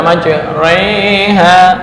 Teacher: harakat fathah didekatkan ke kasrah fathah lurus kasrah bawah didekatkan dan Alif kepada ya yang asalnya maj ro ro fathah dibaca majriha didekatkan dari fathah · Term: imalah kubra